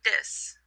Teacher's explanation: You take the TH and you move the tongue back from between the teeth to the alveolar palate